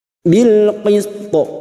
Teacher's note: Huruf to yang memiliki sifat qalqalah dengan pantulan yang kuat karena mati di akhir kalimat dan dibaca waqaf qalqalah kubra.